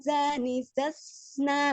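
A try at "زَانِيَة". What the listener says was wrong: Oh, jangan makhraj huruf nun ya, yang di ini ya, zan gitu, jangan ditahan nunnya. Ngalir, samar ya, samar, tengah-tengah. Nah, jadi jangan zuzan gitu ya, jangan menekan makhrijul huruf nunnya. Tidak ditekan.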